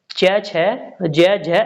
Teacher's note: च वर्ग जो है वह तालव्य होता है